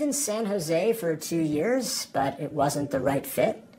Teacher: my voice is rising at the ends of both those statements but I'm not asking a question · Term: up to